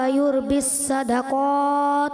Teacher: युरबिस सदक़ात में जो है रा पुर नहीं हो सका